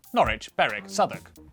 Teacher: W, at the start of the final syllable, is silent.